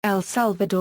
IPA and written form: ɛl ˈsælvədɔr (El Salvador)